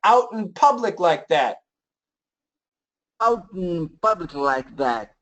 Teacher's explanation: It's a stop T actually, so like mountain, out, same idea.